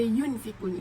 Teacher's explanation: Okay, yang terakhir pada yunfikun, yun adalah ihfa sebab huruf nun sukun bertemu dengan fa. Cara membacanya sama dengan dengung dan ditahan selama 3 harakat. Pada waktu mengucapkan huruf nun mati tu, sikap lidah dan bibir kita ni dipersiapkan menempati dengan huruf fa.